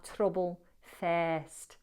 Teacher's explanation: We have a tapping on the R.